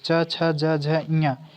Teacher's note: च छ ज झ ञ ये किस वर्ग के अंतर्गत आते हैं तो तालू के अंतर्गत आते हैं